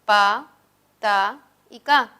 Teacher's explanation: Recordemos que las oclusivas sordas son pa, ta y ka